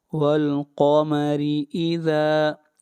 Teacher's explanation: را کو لمبا کریں گے 1 الف کے برابر، مد اصلی ہے